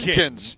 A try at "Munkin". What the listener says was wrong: No, Munkin singular. Munkin, because tomorrow Mike Sanford is at the Munkin Barrel.